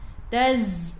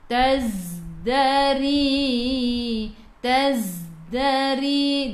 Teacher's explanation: Sifat huruf zai safir, kena bunyikan z, bunyi lebah. Taz, berdesir.